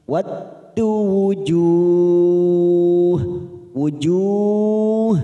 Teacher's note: mat arid li sukun karena ada mat yang bertemu dengan huruf hidup yang dibaca waqaf. 4 harokat kita panjangkan